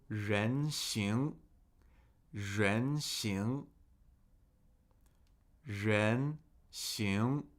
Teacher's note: Two second tones, two rising tones.